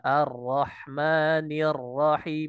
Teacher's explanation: huruf ra itu sebenarnya ketika kita lafazkan maka ia tidak tidak seperti halnya huruf idbaq ya jadi pangkalnya itu sekedar sekedar terangkat saja